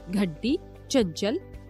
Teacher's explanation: यह है इसका उच्चारण वर्गों के पांचवें वर्ण जैसा होता है इनका उच्चारण करते वक्त सांस वायु नाक से निकलती है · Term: अनुस्वार